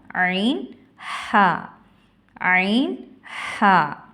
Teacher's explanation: ஐன் ஹ தொண்டையின் நடு பாகத்தில்ிருந்து ஒலிக்க பெறுகின்றன